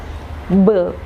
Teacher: So bilabial means it includes or it needs our 2 lips.